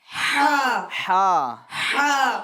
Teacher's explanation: اس ہا کو ہمیں درمیان حلق سے ادا کرنا ہے